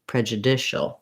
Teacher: it's similar to judicial in rhythm because we stress on the dish in prejudicial · So that means we have the clear vowel, but we're still going to be fast on that syllable, prejudicial. And then we also keep the j of prejudice with that vowel schwa. So we lose our oo of judicial.